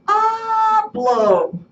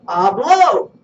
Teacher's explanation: the stress goes on the next to the last syllable